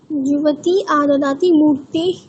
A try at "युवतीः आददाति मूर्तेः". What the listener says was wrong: আবার বিসর্গটা উচ্চারণ করো। ইবতী এইখানে উচ্চারণটা করো, নাহলে ইবতী বলেছো, ইবতী না ইবতীহি আদদাতি মূর্তেহে, বিসর্গটা উচ্চারণ।